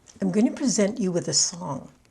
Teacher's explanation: Present Verb, accent on the second syllable.